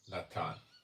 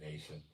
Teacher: There's no TH sound in Hebrew. It's a T.